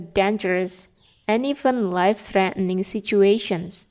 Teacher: D-nya ini dihilangkan atau tidak dibaca kalau teman-teman menggabungkan antara and dan even life-threatening situations. Meskipun demikian, bisa juga dibaca sebagai kata yang utuh, and, even, dangerous and even life-threatening situations.